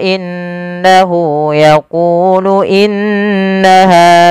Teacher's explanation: dalam membaca gunah itu perlu ada penahanannya dan memasukkan ke rongga hidung